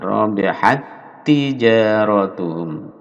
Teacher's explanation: tak sukun bertemu tak, ini disatukan.